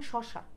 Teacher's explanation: উচ্চারণের প্রকৃতি অনুযায়ী তালব্যস্য উষ্ম ব্যঞ্জন, যেমন শশা। আবারও বলছি, উচ্চারণের প্রকৃতি অনুযায়ী তালব্যস্য যদি বলে উষ্ম ব্যঞ্জন, উচ্চারণের স্থান অনুযায়ী তালব্যস্য তালব্য ব্যঞ্জন, ওকে।